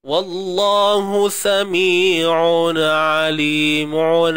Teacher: Ain bertemu dengan ain ni tuan-puan. Hati-hati. Pisahkan bunyi dia. Walaupun ain sebutan yang sama.